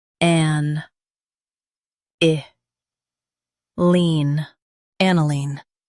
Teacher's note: Stress an and keep i-line light.